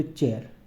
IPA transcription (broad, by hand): tʃ